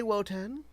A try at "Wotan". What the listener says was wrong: Shorten the name, heavy on the T. It's said with the same cadence as Odin.